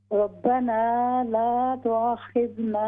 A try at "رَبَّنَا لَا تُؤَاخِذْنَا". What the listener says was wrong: ہاں جی یہ الف مدہ ہمارا مس ہو گیا. ہم نے پڑھنا ہے ربنا لا تؤاخذنا. تو یہ الف مدہ ہے.